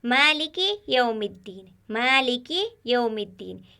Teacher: यहाँ कोई हर्फ मोटा नहीं, यहाँ पर सभी हर्फ बारीक है क्योंकि 19 हर्फों में से है जो हमेशा बारीक पढ़े जाते हैं।